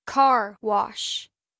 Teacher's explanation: Và car wash, chúng ta lên giọng ở car